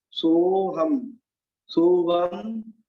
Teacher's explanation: सो को थोड़ा सा लंबा खींचना है, इसमें आ का भी उच्चारण हो जाए।